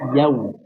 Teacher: Jadi ketika ya kita buka ya-nya yau tapi langsung dimonyongkan. Ya diucapkan dulu fathahnya ya sempurna.